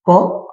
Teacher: ক বর্ণ উচ্চারণ করার জন্য কম শ্বাস বায়ুর প্রয়োজন হচ্ছে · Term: অল্পপ্রাণ বর্ণ